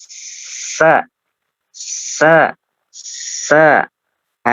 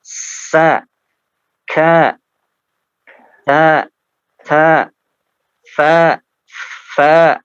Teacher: dalam pengucapannya harus ya harus mengalirkan nafas ya bukan suara tapi nafas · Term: nafas yang mengalir